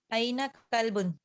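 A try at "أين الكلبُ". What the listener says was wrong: این الکلب, ملا کر این الکلب.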